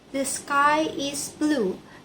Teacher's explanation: A child insert a vowel before L in blue.